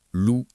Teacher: on prononce les deux voyelles distinctement, lou et